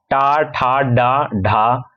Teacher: अगर हम यहां पे ट वर्गी की बात करें। ट, ठ, ड, ढ इनके उच्चारण स्थान जो होते हैं, मूर्धा से होते हैं।